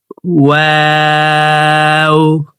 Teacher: ওয়াও হরফকে 2 ঠোঁট গোল করে 2 ঠোঁটের মাঝে ফাঁকা রেখে উচ্চারণ করে পড়তে হবে